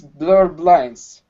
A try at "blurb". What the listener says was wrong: Not blurred, but blurb with a B.